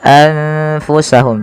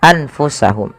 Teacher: nunnya disamarkan kepada huruf Fa maka menjadi anfusahum tidak lagi dengan jelas suara nunnya anfusahum tapi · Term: Ikhfa